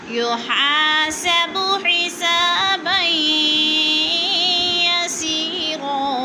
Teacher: फ़सौफ़ युहासबु, युहा को थोड़ा सा खींच कर पढ़ना है, अलिफ खाली से पहले ज़बर, अलिफ मद्दा